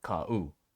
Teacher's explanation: it blends together as kau, but it's still ka, u